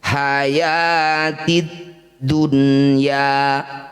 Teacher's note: Nun sukun bertemu ya atau waw ya di satu kata disebut bacaan namanya izhar wajib atau izhar mutlak. Bunyi nun sukun wajib atau harus dibaca dengan jelas, tidak boleh berdengung.